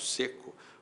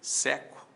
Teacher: Seco tem timbre fechado, seco tem timbre aberto